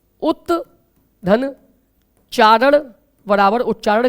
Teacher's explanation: क्योंकि त का मेल जब च या छ से होता है बच्चों तो ता जो है वो च में बदल जाता है तो शुद्ध ता था शुद्ध च में बदल गया और शब्द